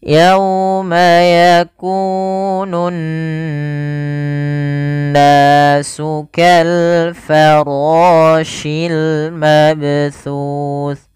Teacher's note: Huruf sa makhrajnya adalah ujung lidah. Ujung lidah nempel dengan gigi seri atas. Gigi seri atas harus ditempel supaya suara sanya pas.